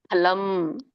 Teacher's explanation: ಫಲಂ ಅಲ್ಲ, ಫಲಂ, 2 ತುಟಿಗಳು ಹತ್ಬೇಕು